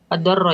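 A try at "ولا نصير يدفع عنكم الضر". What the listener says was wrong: ad-durra, dotnya dhammah.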